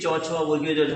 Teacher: তবে কোনো কোনো ব্যাকরণবিদের মতে এই 25খানার মধ্যে চ ছ বর্গীয় জ এবং ঝ এরা ঘর্ষণ ক্রিয়া করে, সেই কারণে এদেরকে ঘৃষ্ট বর্ণ তারা বলতে চেয়েছেন।